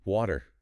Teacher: Almost like a really fast D sound. >> Linguists call that a flap.